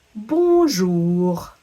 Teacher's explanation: In the word bonjour, you might notice that you didn't hear the N in the middle, and in fact that little letter group ON makes the sound un.